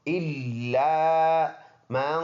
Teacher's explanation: الا، یہ حمزہ ہے، لام مشدد ہے، یہ الف مدہ ہے، الا من، ناک میں آواز لے کے جائیں گے اخفا کر کے